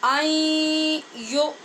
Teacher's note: یہ غنے کے ساتھ ادغام ہو رہا ہے